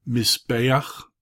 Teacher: Notice that guttural, it has that easing vowel, furtive patah. Mizbeach, altar.